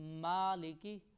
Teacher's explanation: یہ میم کو تھوڑا لمبا کریں گے اور میم کی آواز ناک میں نہیں جانی چاہیے، ما نہیں پڑھنا چاہیے۔